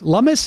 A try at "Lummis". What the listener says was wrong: I think it's Lummis, actually, not Loomis.